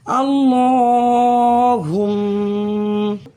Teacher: میم پر تشدید ہے، میم مشدد کی وجہ سے اس میم میں ایک الف کے برابر غنہ ہوگا۔ حالت وقف میں زبر ختم ہو جائے گا، حرکت کا کوئی حصہ نہ ہوگا، لیکن تشدید باقی رہے گی، اس کی وجہ سے اس میم میں بھی ہم حالت وقف میں ایک الف کے برابر غنہ کریں گے۔ · لفظ اللہ سے پہلے الف کے اوپر زبر ہے، تو اس اللہ کے لام کو ہم موٹا پڑھیں گے، اور تشدید کی وجہ سے یہاں جمع بھی ہوگا، ایک الف کے برابر کھینچیں گے۔